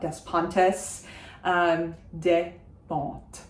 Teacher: I do say the T at the end because it's followed by an E, but I don't pronounce any of the S's.